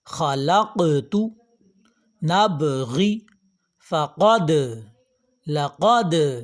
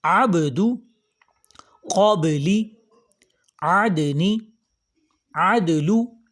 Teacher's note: دوسری صورت اس کے پڑھنے کی قلقلہ ہے، یعنی آواز ٹکرا کے واپس آتی ہے۔